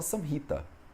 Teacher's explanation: Porque tem um A curto, a gente pronuncia sem o A. Quando tem um A longo, a gente pronuncia como um A curto.